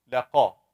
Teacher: The qaf has fatha. We don't shake it.